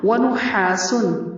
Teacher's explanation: ہا کی آواز حلق سے، سین پر اخفا ہوگا